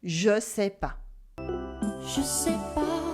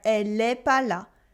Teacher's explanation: in informal French, one thing that we would actually do is to drop the ne. And we would say instead, je sais pas.